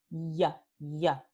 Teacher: Ya, ya. Tenemos fricción, ¿sí? Entre el dorso de la lengua y el paladar. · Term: palatal fricativo